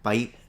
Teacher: she's not pronouncing the S at the end, she's just doing this little país type of thing.